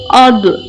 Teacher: جب زبان کی کروٹ اوپر کی بائیں یا دائیں طرف کی داڑھوں کی جڑ سے لگے تو ضاد ادا ہوتا ہے، اسے پر پڑھا جاتا ہے، جیسے حمزہ ضاد زبر اد۔